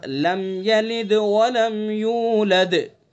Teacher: इसके मीम के अंदर इजहार होगा, मीम साकिन के बाद या है तो इसलिए इसमें इजहार होगा।